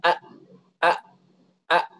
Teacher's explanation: Hamzah itu keluar dari mana keluar dari pangkal tenggorokan